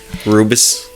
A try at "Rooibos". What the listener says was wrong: Boos. Not bus. Boos, not bus. Boos.